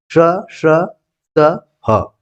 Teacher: ईषत विवृत, इसमें जिह्वा को कम उठाना पड़ता है, जैसे श, श, स, ह, यानी कि जो उष्म वाला पोर्शन है वो ईषत विवृत कहलाता है।